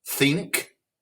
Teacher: anytime there's an N before a K, it's got the NG sound